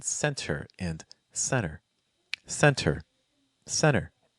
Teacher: So what we often see in American English instead is that if you have the letter N that is followed by the letter T, then very often this T sound is just going to completely go away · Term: silent T